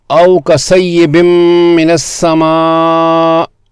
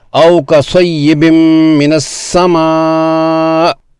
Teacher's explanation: حمزہ پر نبر کرتے ہوئے اس کی آواز کو اونچا اور نمایاں کیا ہے